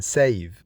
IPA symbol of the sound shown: v